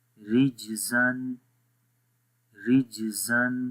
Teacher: یہاں پر بھی جو قلقلہ ہے جیم کے اوپر وہ ویک قلقلہ ہے، کمزور قلقلہ ہے، سخت نہیں ہے، ٹھیک ہے. کیونکہ جب قلقلہ والے حروف کسی ورڈ کے بیچ میں آ جائیں، درمیان میں آ جائیں، تو وہاں پر قلقلہ ویک ہو جاتا ہے.